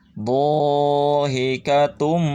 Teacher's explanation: Tanwin dhammah, setiap tanwin dhammah menghadapi mim, maka harus ditekan dan dengungkan, lebur tanwinnya ke mim, seolah-olah tidak ada tanwin. Dhahikatum, tum jadi didengungkan.